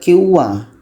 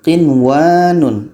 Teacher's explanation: Jangan dibaca kiwa, tapi qinwanun, jelas dan tidak ada dengung.